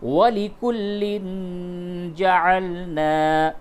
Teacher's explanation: تنوین ہے، اور تنوین کے بعد جیم ہے، اس جگہ پہ اخفا کیجئے